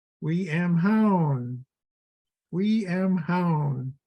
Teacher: instead of saying the W sound with the front of my mouth, it starts kind of in the back of my throat